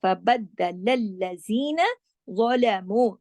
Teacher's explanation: ظا موٹا اور باقی تمام باریک حروف ہیں · یہ تمام باریک حروف ہیں۔ نیکسٹ دیکھیے، فَبَدَّلَ الَّذِينَ ظَلَمُوا، فَبَدَّ دال پہ تشدید ہے، سختی سے جوڑنا ہے